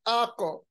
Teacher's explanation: इस हर्फ पर जब जज्म हो तो इसकी आवाज वापस आती है, जिसको हम कलकला कहते हैं